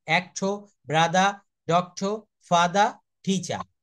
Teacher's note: এই শব্দগুলার শেষে কখনো তারা আর এর উচ্চারণ করবে না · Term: ব্রিটিশ এক্সেন্টে